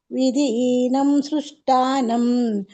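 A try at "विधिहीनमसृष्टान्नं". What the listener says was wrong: ಅಸೃಷ್ಟಾನಂ, ನೀವು ಹೀನಂ ಹೇಳಿದ್ರೆ ಅಸೃಷ್ಟಾನಂ ಅಂತ ಹೇಳ್ಬೇಕು. ವಿಧಿಹೀನಮ ಸೃಷ್ಟಾನಂ ಅಂತ ಹೇಳ್ಬೇಕು. ಇಲ್ಲಾಂದ್ರೆ ವಿಧಿಹೀನಂ ಅಸೃಷ್ಟಾನಂ ಅಂತ ಹೇಳ್ಬೇಕಾಯ್ತಾ.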